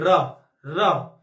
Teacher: क्योंकि जब इसको बोलते हैं ना तो ये आवाज यहां से आती है। र ऐसा लग रहा है हमें कंपन हो रही है आवाज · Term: प्रकंपित व्यंजन